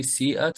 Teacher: I should stretch the ya 4 count